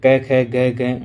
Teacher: जो क वाली लाइन है वो पूरी कंठव्य से आती है